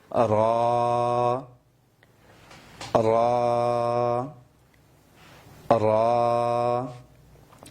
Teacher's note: را را، یہ جو را آپ نے پڑھ لیا نا پتلا، اسی کو تھوڑی موٹی آواز کے ساتھ، ہم نے عرض کیا تھا جب آپ ہونٹوں کو دائیں بائیں اس طرح سے کھولیں گے تو آواز پتلی ہو جائے گی، جب ہونٹوں کو گول شکل میں لے آئیں غنچے کی شکل میں تو اس کی آواز موٹی ہو جائے گی